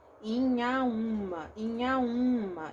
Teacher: Quando eu falo em Inhaúma, eu nasalizo esse I aqui, Inhaúma. E quando eu falo o U também, eu nasalizo. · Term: nasalizado